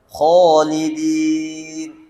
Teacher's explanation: Alifnya terbawa arus atau tersambung dengan huruf kha-nya. Huruf kha huruf tebal. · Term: ditebalkan